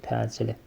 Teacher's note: Təcili bu uzanır, vurğu sona düşür. Təcili. Vurğunun yerini dəyişməklə mənası dəyişən sözlər alın, alın, qovurma, qovurma, dimdik, dimdik.